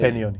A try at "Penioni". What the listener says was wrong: Yeah, you pronounce the P as a B.